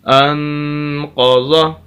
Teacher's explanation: یہ قاف اور ضاد، یہ 2 حروف یہ موٹے حروف میں سے ہیں، ان کو پر کر کے پڑھنا ہے، موٹا کر کے پڑھنا ہے۔